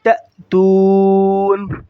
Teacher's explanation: stop کی حالت میں نون کی زبر کو ظاہر نہیں کریں گے